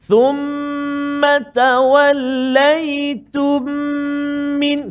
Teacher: Cara bacaannya ialah dengan memasukkan huruf mim yang pertama ke dalam mim yang kedua beserta dengan dengung sebanyak 2 harakat. · kita cuba bacaan dia dengung 2 harakat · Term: idgham mithlain saghir, idgham mislain saghir